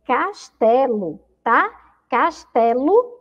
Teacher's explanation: Castelo, escrevemos com O, mas ela tem o som de U, tá? E não colocamos o U porque é uma sílaba fraca.